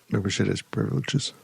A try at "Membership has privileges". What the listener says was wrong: I don't think you got a P on the end of that. I heard something bleepable.